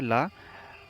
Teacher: ला जीभ के बगल से पार्श्व होकर हवा निकलती, तो इसको पार्श्विक कहते हैं ला को बोलने पर।